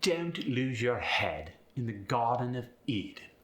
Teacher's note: The pitch glide, when you're speaking with an upper class British accent, actually gets a downward pitch with those British stresses still in there. For instance, Don't lose your head in the Garden of Eden when spoken by someone who is upper class is going to sound like, don't lose your head in the Garden of Eden.